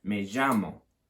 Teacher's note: this double L, don't pronounce it as a Y at all. Quite often you hear it pronounced as a je sort of sound.